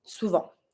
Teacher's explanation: Careful, we don't pronounce the T.